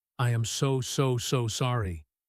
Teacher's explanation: with a high, shaky voice and he speaks very quickly, "I am so so so sorry." You can hear the genuine panic and regret. · "I am so sorry." with a high, shaky voice, and he speaks very quickly